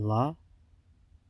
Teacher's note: we have a lateral approximant